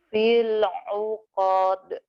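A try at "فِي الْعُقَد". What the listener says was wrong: pendek ya, fil uqad, nggak panjang.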